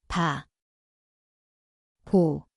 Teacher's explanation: It sounds like B/P. The place is the both lips.